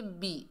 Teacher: با کے نیچے زیر بغیر کھینچے پڑھیں گے بی، بے نہیں پڑھنا، مجہول ہے، معروف پڑھیں گے بی۔